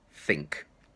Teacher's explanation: It comes out between my teeth, and as I say the word, I pull it back in. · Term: the 'th' sound